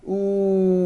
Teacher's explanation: our mouth and our lips come tightly forward, as if you would be saying the ooh sound.